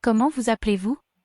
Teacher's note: The T of comment is silent. The S on the first vous is heard because it's followed by a vowel.